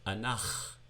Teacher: Notice the glottal stop that you come to with the shva underneath the chet.